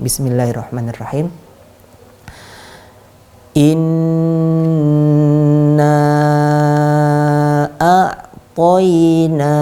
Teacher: Nun yang bertasydid maka kita panjangkan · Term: gunnah